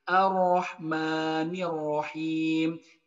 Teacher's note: jadi ketika pelafalan huruf ro itu cuma ada satu getaran